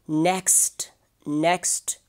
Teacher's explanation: So here in the coda, we have three consonants coming together, so it is a consonant cluster.